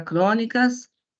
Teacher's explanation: essa palavra é uma palavra proparoxítona pois possui o seu acento tônico na antepenúltima sílaba